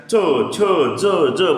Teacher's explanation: टाळूतून उच्चार निघणारे शब्द म्हणजे काय असते तर तालव्य असते.